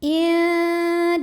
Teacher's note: Lam pada lafaz Allah atau lam jalalah dibunyikan secara tarqiq sebab huruf sebelumnya berbaris kasrah. Maka dibacanya lah tipis.